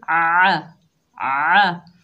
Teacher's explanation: आइन के ऊपर ज़बर बगैर खींचे पढ़ेंगे। आइन को हलक के दरमियान से अदा करेंगे।